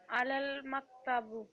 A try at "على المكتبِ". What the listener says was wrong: अलल मकतबी, अलल मकतबी, आखिर में कसरा।